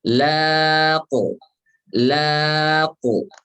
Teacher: Ya, pantulannya jangan laqe. Laqe. Laqe. Tapi laqu. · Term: qalqalah